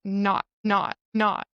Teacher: So with the word not, you can hear that it's not because if there's no T, it's no and the vowel is open. But the T, it's not pronounced, but it stops the air.